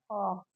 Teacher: خا حرف پڑھنا ہے، خا، اور یہ حلق کے درمیانی حصے سے ادا ہوتا ہے